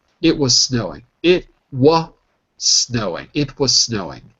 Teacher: if you're speaking fast, you can probably just drop the Z altogether.